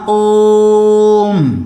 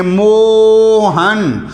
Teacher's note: दीर्घ स्वर से भी 3 गुना में ज़्यादा श्वास की जरूरत पड़ती है, तो इसको कहते हैं हम प्लुत स्वर